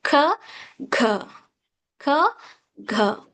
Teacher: velar sounds back of the tongue, soft palate